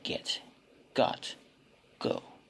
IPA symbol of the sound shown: g